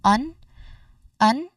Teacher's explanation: the first syllable, the vowel sound is quick and you know relaxed and unstressed. It's like an h sound but then you pair it with a nasal sound or the letter n sound.